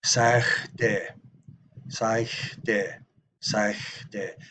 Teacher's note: Sagde. It's a little bit of a fricative velar sound